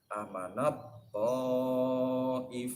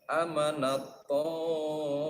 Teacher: Taknya ini diidghamkan, dimasukkan huruf ta. Ini idgham jinsi.